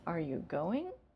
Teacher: the response is going to be either yes or no, the intonation is going to rise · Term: yes-no question